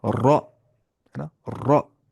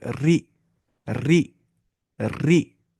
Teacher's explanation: अगर इस रॉ पे लेकिन जेर आ रही है नीचे, तब मोटी आवाज से नहीं पढ़ेंगे, तब हल्की आवाज से पढ़ेंगे, बारीक आवाज से पढ़ेंगे। रॉ जेर री, री नहीं पढ़ना है, री नहीं।